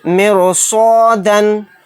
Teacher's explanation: اس صاد کی وجہ سے رائے ساکنہ کو موٹا یعنی پر پڑھیں گے